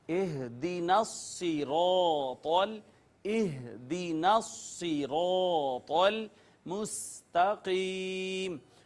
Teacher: مشدد کا معنی ہوتا ہے جس پر سختی کی جائے، تو نون کو زور سے سختی اور قوت سے صاد کے اوپر ماریں گے، اس کو ٹچ کریں گے، اور اس کے بعد صاد کو پر کر کے پڑھیں گے، موٹا کر کے پڑھیں گے، را کو بھی پر کر کے پڑھیں گے اس وجہ سے کہ اس کے اوپر زبر ہے، اور طا بھی ان حروف میں سے ہے جو پر پڑھے جاتے ہیں۔